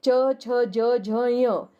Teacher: जो च वर्ग वाले हैं च, छ, ज, झ, य, इनका उच्चारण करते वक्त हवा का प्रेशर तालू पर पड़ता है।